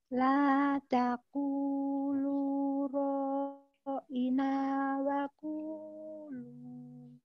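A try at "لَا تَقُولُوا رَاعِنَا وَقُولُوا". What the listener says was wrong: Tadi kayaknya di ra'inanya panjang ya. Harusnya gini. La taqulu ra'ina ra'ina wa qulu. Udah bagus cuma di ra'ina aja tadi kurang tepat.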